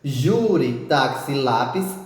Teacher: uma palavra em que a penúltima sílaba é mais forte ou seja que você colocou mais força para ler ou para falar e ela foi terminada em e ou terminada em i s